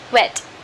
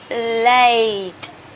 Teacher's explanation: the diphthong, two single vowels together, so they come from a and then end in e. Okay, begin with a, and end with e.